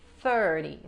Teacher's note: hay que meter la lengua entre los dientes para pronunciar la TH